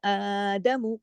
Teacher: आदमु खड़ी जबर एक अलिफ के बराबर पढ़ी जाती है।